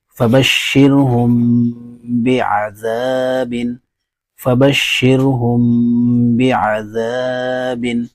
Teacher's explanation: میم ساکن کا اخفا. میم ساکن کے بعد با آئے تو میم ساکن کو غنہ اور اخفا کے ساتھ پڑھیں گے، اس کو اخفاء شفوی کہتے ہیں.